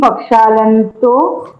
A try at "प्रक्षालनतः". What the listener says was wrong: आहा, न और तो जुड़ा थोड़े ना है, छुटा है ना।